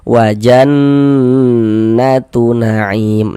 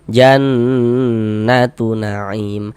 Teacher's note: Jadi di bagian jannya itu suaranya itu kita tahan, kita panjangkan sejenak, kita gunnahkan. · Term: gunnah musyaddadah